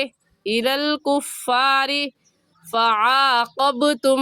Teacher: را کے نیچے زیر ہے، باریک کر کے پڑھیں گے، اور باریک کرنے کا طریقہ کہ آپ کے دونوں ہونٹ پھیل جائیں